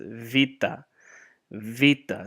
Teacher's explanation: but in the modern Greek it's vita, vita, so like a V